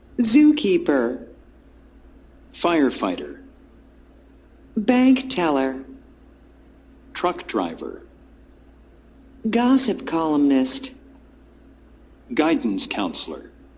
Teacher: Notice that the first word in these compound nouns has more stress. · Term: Stress with compound nouns